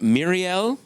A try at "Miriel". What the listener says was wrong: It's that pesky tapped R again.